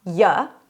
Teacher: the middle syllable is usually a schwa